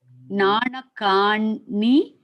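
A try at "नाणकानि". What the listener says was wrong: Ni, not na, ni.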